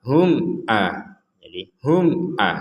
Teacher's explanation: ada mim sukun bertemu Hamzah maka kita bacanya dengan jelas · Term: dibaca dengan jelas